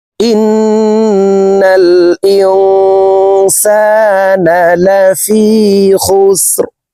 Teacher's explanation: লা ফি, খ সিন পেশ খুস, র দুই জের রিন, খুস রিন, রকে ওয়াকফের ক্ষেত্রে সাকিন করে ফেলবো